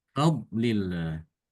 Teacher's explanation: Padahal tidak boleh demikian. Yang tebal adalah dot. Ya. Fa-nya tidak boleh ikut tebal. Fa-nya dibaca tipis.